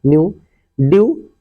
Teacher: तो इस तरह से अगर ई और डब्ल्यू दिया है उसके पहले कोई कॉन्सोनेंट आया है तो कॉन्सोनेंट को बहुत थोड़ा सा पढ़ते हैं, अर्थात आधा ही पढ़ देते हैं, और यू उसी में आगे जोड़ दिया जाता है